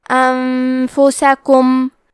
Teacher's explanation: کلمت انفسکم میں نون ساکن ہے، پھر حرف الفا ہے. فا حروف الاخفاء میں سے ہے، تو ہم یہ حکم کو غنہ کے ساتھ ادا کریں گے